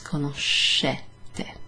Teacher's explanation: Pay attention to the SCE. There, that's a sh sound. It's not ske, it's sh.